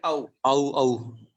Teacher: आ का है कंठ और ओ का है ओष्ठ, कंठोष्ठ। तो कंठोष्ठ।